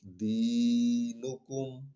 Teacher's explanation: تھوڑا سا لمبا کریں کیونکہ یہاں پر دال کے آگے یا ہے